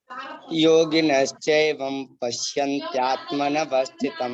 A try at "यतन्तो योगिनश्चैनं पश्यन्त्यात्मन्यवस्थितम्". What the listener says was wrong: एवं नहीं है बेटा, यतन्तो योगिनश्चैनं पश्यन्त्यात्मन्यवस्थितम्